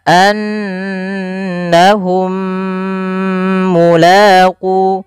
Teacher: mim yang pertama masukkan yang mim kedua kemudian ditahan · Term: idgham mimi